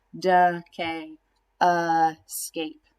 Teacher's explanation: they both have a schwa sound in that unaccented syllable